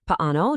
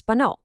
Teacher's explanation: Paano drops a vowel and becomes pano.